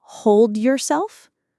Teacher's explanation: Hold yourself starts to sound like hold yourself because the D at the end of hold links directly into the Y of yourself. That linking is completely normal and natural.